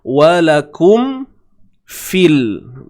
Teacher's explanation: di sini adanya pertemuan mim mati dengan huruf fa, maka perlu dijelaskan sebutan mim. Tidak ada unsur dengung sehingga kadar 2 harakat. Cuma yang ada ialah dengung asliyah yang sememangnya ada pada huruf mim.